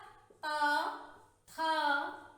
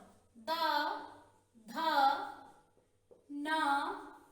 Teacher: ये सब दांत की सहायता से बोले जाते हैं। इनका उच्चारण स्थान दंत है, दांत है।